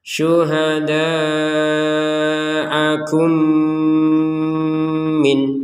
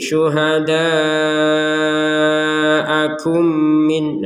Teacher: mim sukun bertemu mim, maka kita masukkan mim yang pertama kepada mim yang kedua sehingga terbacanya dengung 100%. Contoh, syuhada'akum min, kum itu dengung dulu, dengung baru min gitu.